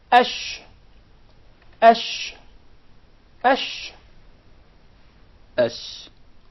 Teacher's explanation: So there is a very noticeable elevation in the middle part of the tongue. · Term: sheen